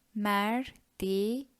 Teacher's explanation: First syllable includes an unrounded vowel, which is e, and the second syllable is also having an unrounded vowel, which is e.